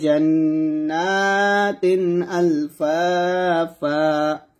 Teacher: ওয়াকফের অবস্থায় তানবিনে দুইটা জবর থাকার কারণে একটা জবর বাদ দিয়ে দিছি, আরেকটা জবর স্থানে রেখে এক লিপ পরিমাণ টেনে পড়ছি